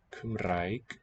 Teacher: The R is a trill at the tip of the tongue, like in Italian.